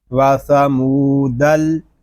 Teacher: دال لام زبر دل، واسامو دل، دال کو لام کے ساتھ ملائیں گے، آگے جو الف ہے اس کو ہم نہیں پڑھیں گے